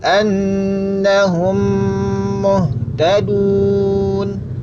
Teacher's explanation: gunanya diucapkan dengan menempelkan bibir atas dan bawah secara sempurna yakni secara mantap · cara membaca Meme yang pertama Meme yang sukun tadi diidghamkan yakni dimasukkan ke dalam huruf mim yang kedua yang berharakat dengan disertai tempo gunnah yang dipanjangkan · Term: idgham mimi